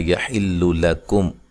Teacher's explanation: میم ساکن کا یہاں اظہار ہے، غنہ نہیں کریں گے۔